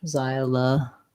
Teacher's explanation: So we have the Z sound. The letter Y says the diphthong I. First syllable stress. Xy, la. This O says schwa.